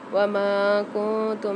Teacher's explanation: میم کے ساتھ الف مد آ رہی ہے، ایک الف مدار کھینچ کے پڑھیں گے میم کو